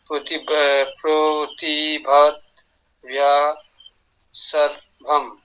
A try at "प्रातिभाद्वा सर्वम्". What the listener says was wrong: प्रतिभा, प्र नहीं है, प्रा है, प्रतिभा द्वा सर्वम। प्रतिभात वा सर्वम।